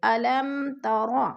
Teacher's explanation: میم ساکن کے بعد تا آ گیا ہے تو ادھر اظہار کریں گے، اخفا نہیں کریں گے، غنہ نہیں کریں گے، یعنی ناک میں آواز نہیں لے جائیں گے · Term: اظہار شفوی